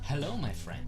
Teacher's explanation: you can see the tongue drop down the tongue dropping down is the L shape being released